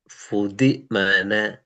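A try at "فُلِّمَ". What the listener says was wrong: தி அல்ல, ஃபுல்லி. ஃபுல்லி தி வரக்கூடாது.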